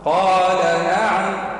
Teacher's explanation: قال نعم فيها نبر على كلمة النون يعني على حرف النون حتى تبين المعنى الحقيقي للآية